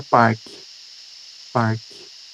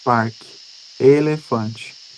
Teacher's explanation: Esse som final, ele é muito mais fraco, certo? Então ele não tem a mesma força e um som de E tônico